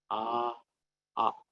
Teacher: at the throat but if you closely observe the tongue the the end part of the tongue somewhere close to the throat actually it will be raised slightly to help the resonance of the sound